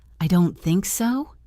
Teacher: If I say it with a rising pitch, I don't think so. It sounds like a question or like I am unsure.